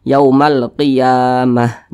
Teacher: pada huruf Ta marbutah ini maka huruf ta dirubah menjadi H kalau kita berwakaf atau berhenti tepat di huruf ta marbutah maka dia akan menjadi H